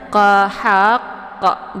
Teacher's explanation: Nah, cara bacanya haqqa, ditahan dulu ya sehingga terbentuk ini tasydidnya, baru dibunyikan pantul. Bi ghairil haqqa, haqqa, jadi tasydidkan dulu baru dipantulkan qafnya, haqqa ya. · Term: qalqalaf akbar